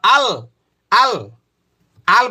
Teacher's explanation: তারপরে হলো 8 নম্বর মাখরাজ, জিহ্বার আগার কিনারা সামনের উপরের মাড়ির দাঁতের মাড়ির সঙ্গে লাগায়। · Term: লাম